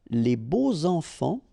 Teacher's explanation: you make the liaison between beau, so adjective and enfant. And here it's quite interesting because even if you've got this X, well, phonetically it will be like Z, so like if it would be an S, okay?